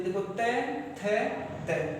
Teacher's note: जीभ कहाँ पर आ रही है, दांतों पर आ रही है ना